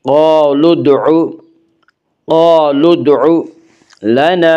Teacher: قالوا ادعوا لنا، الف مدہ، الف ہمیشہ مدہ ہوتا ہے، الف سے پہلے ہمیشہ زبر ہوتا ہے۔ الف مدہ کو ایک الف کے برابر کھینچ کر پڑھیں گے۔